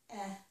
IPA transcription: ɛ